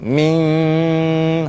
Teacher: Mesti ada dengungan getaran di dalam hidung. Bukan di luar hidung